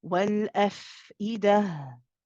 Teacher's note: You want the ha at the end to run as well, the same as the fa.